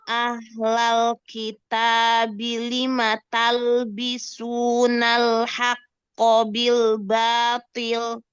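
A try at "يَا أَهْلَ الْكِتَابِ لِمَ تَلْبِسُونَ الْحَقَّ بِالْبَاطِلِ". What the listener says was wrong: Nah, bagus. Yang lain lamnya kurang lebar.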